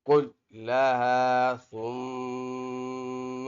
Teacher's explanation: ادھر میم مشدد ہے، ناک میں آواز پیدا کریں گے۔ ثم عرضهم را کے اوپر زبر ہے، را کو پر پڑھیں گے یعنی موٹا پڑھیں گے۔ · لام پر تشدید ہے، لام پہ سختی بھی کریں گے، لام کو کاف کے ساتھ ملا کر بھی پڑھیں گے۔ کلها ثم ادھر میم مشدد ہے، ناک میں آواز پیدا کریں گے۔